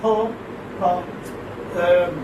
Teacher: Pa is a bilabial plosive. Bilabial voiceless plosive.